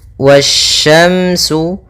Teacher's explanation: Pada bacaan wasyamsu di sini ada alif lam syamsiyah, yang mana alif dan lamnya tertulis, akan tetapi alif dan lamnya tidak dibaca, sehingga kita langsung baca ke huruf setelahnya, yang mana sya termasuk huruf syamsiyah.